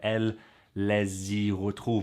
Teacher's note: you have that liaison between S and Y because that's just how it is. It becomes a Z sound